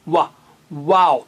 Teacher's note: पहले होठों को गोल करना है व जैसे वी जैसे इंग्लिश का लेटर है वैसा नहीं हंठों को गोल करिए वाह वाओ फिर खोलिए वाओ ठीक है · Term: वाव